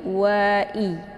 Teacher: wa dibaca pendek, kemudian i juga dibaca pendek, bukan ai ya, tapi i jelas ya